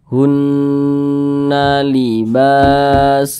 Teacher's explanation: tanda baca fathah dan posisinya tepat berada di belakang huruf alif Mad thobii panjangnya dua harakat atau kira-kira dua ketukan